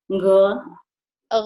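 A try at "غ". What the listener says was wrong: Kalau kalau kita sakit gigi ini ya, tapi kita ngomongnya nggak gigi, tapi ada h-nya di tengah. Jadi kayak orang ngomong gini, gigi, coba gigi.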